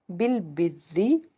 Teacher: इसको अदा करेंगे तो सीटी की आवाज आती है बिल बिररी यहां पे जो रा है वह बेसिकली जेर के साथ है तो इसको हमने बारीक अदा करना है